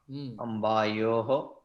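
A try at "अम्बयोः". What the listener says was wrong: Ambayoho. Dirgham, there is no dirgha there. Ambayoho.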